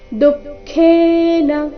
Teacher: ದು ಮೊದಲು ಅಲ್ಪಪ್ರಾಣ ನಂತರ ಖೇ ಮಹಾಪ್ರಾಣ ದೀರ್ಘ